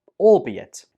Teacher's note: The stress goes on the second syllable.